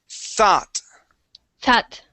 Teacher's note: that's the th sound that is the unvoiced th